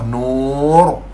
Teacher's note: Kalau sebelum ra mati tu ada huruf wau mad ni, maka kita kena tebal.